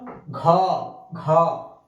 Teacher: স্বরতন্ত্রীগুলো একটু ঝাঁকুনি হয় কম্পন হয় বেশি, সেটা হচ্ছে কি ঘোষ ধ্বনি